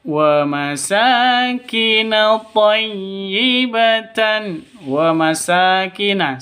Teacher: panjang dua ketukan karena ada alif diawali dengan fathah atau alif sebelumnya berharakat fat fathah. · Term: mad asli